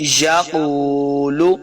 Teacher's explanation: اس قاف کو بھی ہم نے موٹا پڑھنا ہے، حروف مستعلیہ سے ہے، قاف پیش واو واو مدہ ہو رہا ہے، یہاں پہ اس کو دو حرکات لمبا کر کے پڑھیں گے.